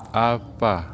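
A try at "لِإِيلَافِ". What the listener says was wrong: Buka lagi Bapak. Afa, kasih angin. Fa. Kasih sebul Bapak. Fa. Nah, coba li'ilafi Quraisy.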